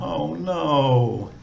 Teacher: if we're disappointed about something, maybe a falling tone